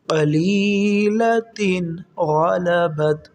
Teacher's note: دیکھیں دو زیر ہے، تنوین، اس کے بعد حرف غین آ رہا ہے، یہ حروف حلقی میں سے ہے، حمزہ ہا عین ہا غین خا، غین حروف حلقی میں سے ہے، یہاں پر غنہ نہیں کریں گے